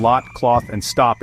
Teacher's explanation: open back rounded vowel, heard in lot, cloth, and stop in RP. Your tongue is low and back, lips slightly rounded.